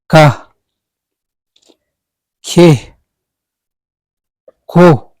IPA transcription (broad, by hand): k